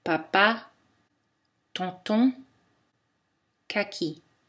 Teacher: Les occlusives non voisées françaises sont comme les occlusives non voisées dans spin, stall, ski. Il n'y a pas d'aspiration.